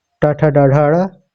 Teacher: मूर्धा में ट ठ ड ढ ड